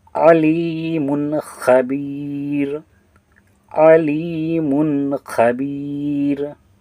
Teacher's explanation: حروف حلقی میں سے ہے، خا جو ہے حروف حلقی میں سے ہے، اس لیے یہاں پر علیمن میں मीम पर जो होगा हम लोग मीम को ज़ाहिर करके पढ़ेंगे